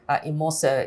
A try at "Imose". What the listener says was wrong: So it's Imose. Yes, the E is almost spelled like an A.